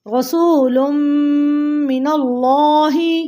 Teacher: من ربک رسول من اللہ، یہاں اللہ کا لام موٹا، کیونکہ یا نون کے اوپر زبر ہے، اللہ کے لام سے پہلے زبر ہے تو یہاں پہ اللہ کا لام جو ہوگا موٹا پڑا جائے گا